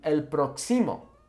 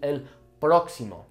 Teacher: But now we have the accent, so the el próximo, okay? The emphasis falling on that first O